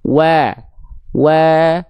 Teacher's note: Nah, biasanya sekali lagi kalau vokal A dia pengin ditipiskan, kita analogikan dengan sedikit senyum, maka lidah kita itu akan lebih rileks dan aula mulut atau rongga mulut kita akan lebih terbuka sehingga wa lebih tipis